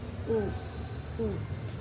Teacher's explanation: Ini U yang pendek. U tidak perlu bibir tidak perlu dimoncongkan dan lidah tidak perlu diangkat terlalu tinggi.